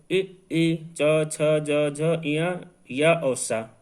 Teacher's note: उसके बाद में ताल से बोले जाने वाले इ च छ ज झ इया या और सा, ये जो वर्ण हैं ये ताल से बोले जाते हैं, इन्हें तालव्य भी कहते हैं।